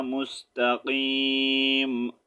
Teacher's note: وقف کی صورت میں ہم یہاں پر میم کو ساکن کریں گے تو ساؤنڈ آئے گا مستقیم